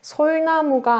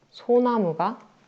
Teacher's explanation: 솔과 나무를 합쳐서 소나무가 되는 경우. 솔나무가 아니라 리을이 탈락돼서 소나무가 되는 경우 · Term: 리을 탈락